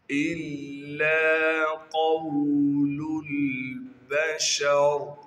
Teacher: قاف کو موٹا کر کے پڑھیں گے اور قاف کو آگے واو ساکن سے ملا دیں گے